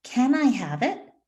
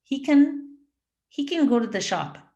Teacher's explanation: can is the beginning it's a an important word in that question so that word gets stressed